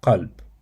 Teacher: place the back of your tongue near the uvula, and then you tighten your throat slightly to create a constricted sound. And then you release the sound with a crisp, strong burst, similar to K, but pronounced much deeper in the throat.